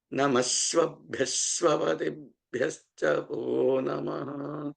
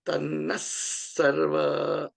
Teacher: When that visarga of namaha is encountering a S sound, the S sound gets doubled up